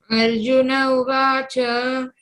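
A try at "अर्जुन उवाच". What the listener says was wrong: Don't say Arjuna Uvacha, you should split it. Arjuna Uvacha.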